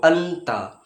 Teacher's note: জীবের এই নোখটা উপরের এই যে আমাদের উপরে দু দাঁত আছে দাঁতের যে উপরে গোড়া আছে সেই গোড়াতে টাচ করে আমরা তা উচ্চারণ করি যেমন হাত দিয়ে যদি আমি দেখাই এটা হচ্ছে ধরুন আমাদের দাঁত